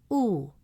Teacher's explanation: to a long oo sound with mouth fully rounded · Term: long u sound